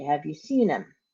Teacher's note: it is him, but the H is not pronounced